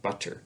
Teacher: a T sound can become a short D sound we call it a flap sometimes when it's on an unstressed syllable between vowel sounds